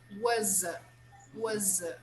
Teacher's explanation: when i have a vowel after the verb was i make a sound of z when i link both words